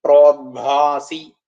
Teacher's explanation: ഭ എന്നുള്ളത് ഒരു മുഴങ്ങുന്ന രീതിയിൽ വരണം.